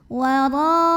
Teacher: huruf ra dibunyikan secara tafkhim sebab barisnya di atas fathah, maka dibacanya tebal